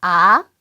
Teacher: 이성은 중간 정도에서 시작해서 위로 요렇게 올라가네요